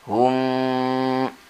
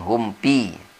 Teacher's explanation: di sini mim mati bertemu fa, tidak boleh dengung, tidak boleh ikhfa. Jadi izhar di sini dan tidak boleh lama membacanya.